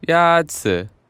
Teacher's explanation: The first tone is a high, level tone.